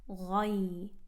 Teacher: This ghain is heavy, going into the ya with sukoon.